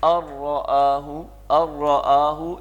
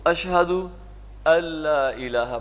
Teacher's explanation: اس میں نون کی آواز بالکل نہیں آئے گی، نون اس میں سے ڈراپ ہو جائے گا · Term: ادغام تام